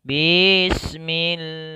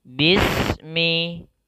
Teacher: Harusnya ba-nya dipendekkan langsung dimatikan ke huruf sin.